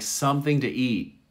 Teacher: you don't hear the t